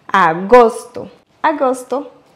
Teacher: en accentuant sur le premier O